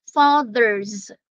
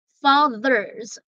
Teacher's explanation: the th there is hard and the S there is pronounced as Z